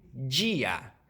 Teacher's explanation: o d e o d viram, antes de i e e, viram j, como em dia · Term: africação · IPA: [d͡ʒ]